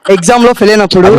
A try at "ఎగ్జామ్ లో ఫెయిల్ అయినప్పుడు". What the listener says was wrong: ముందు ఎగ్జామ్ పూర్తిగా పలుకు. ఎగ్జామ్ ఫెయిల్ అయినప్పుడు కాదు, ఎగ్జామ్ లో ఎగ్జామ్ ముందాను, ఎగ్జామ్ అను. Okay, ఎగ్జామ్,